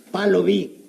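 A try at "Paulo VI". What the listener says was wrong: En primer lugar, no es palo, es Paulo. Aquí sí se pronuncia. Y en segundo lugar, aquí no dice vi, dice sexto. Perdóname, Chimotrufia, pero aquí estas letras que parecen letras no son letras, son números.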